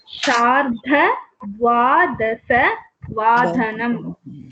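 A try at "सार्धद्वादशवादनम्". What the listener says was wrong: Bahu samichinam. But it's not Sharda, it is Sardha.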